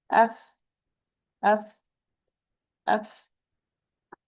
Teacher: I will repeat the makhraj. It is the tip of the upper central incisor with the inner part of the lower lip. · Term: fa